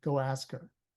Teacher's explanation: The last word, her, is very de-emphasized. It's not stressed at all, because it's not important.